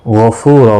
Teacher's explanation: فو واو مدہ ہے، ایک الف کی مقدار کے برابر کھینچ کر پڑھیں گے، اور یہاں پر وقف بالابدال ہوگا، دو زبر کو بدل کر ایک زبر کے ساتھ وقف کریں گے، الف مدہ بنے گا، ایک الف کی مقدار کے برابر کھینچ کر وقف کریں گے۔